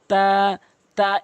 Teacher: এই তটি জিহ্বার আগা সামনে দুটি দাঁতের গোড়া থেকে উচ্চারণ করবেন